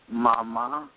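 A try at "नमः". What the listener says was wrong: That's with an N, as in Nancy. Nama.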